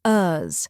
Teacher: Finally, we end with us, a soft, unstressed sound like the aus in fabulous.